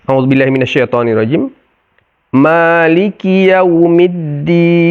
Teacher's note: semuanya adalah huruf istifal, huruf tipis, lidah kita rata di bawah, tidak terangkat sehingga menjadi tebal